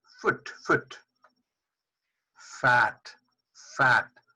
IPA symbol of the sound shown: f